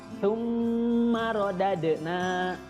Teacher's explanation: Jadi bukan summa, bukan sa, tapi tsumma. Di situ ada mim tasydid, hukumnya adalah gunnah. Jadi harus dengung dulu